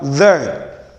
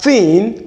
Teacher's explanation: Though both are to be realized with TH, one is voiced and one is voiceless. So, and I said in the Nigerian sense, the one we realize as T is this, the voiceless sound, when the one we realize as D is the voice sound.